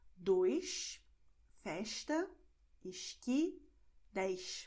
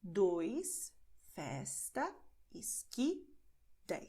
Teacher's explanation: you will have the sound sh in these situations, but only in Portugal and also in the city of Rio de Janeiro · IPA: [ʃ]